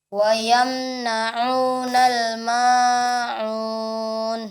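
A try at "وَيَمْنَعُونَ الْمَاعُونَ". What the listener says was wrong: Iya, wa yamna'unal ma'un. Ma-nya 2 harakat saja sekali ketukan. Wa yamna'unal ma'un. Ma'un.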